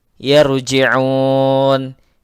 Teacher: La mad tabi'i, yarji'un, ra-nya ra tebal karena sebelum ra berharakat fathah